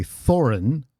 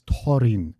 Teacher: So the typical English th sound doesn't exist in dwarfish. It's a t with an h attached. It's the it's a aspirated t.